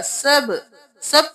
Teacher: با پہ قلقلہ ہے، آواز پلٹ کے واپس آئے گی